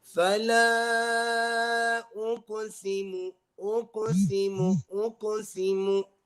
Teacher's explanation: So you're not pausing after the qaf. Don't pause after the qaf because that would become a bigger qalqala